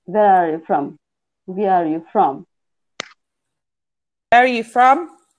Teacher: the you would become weak but the from is important so we stress it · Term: strong form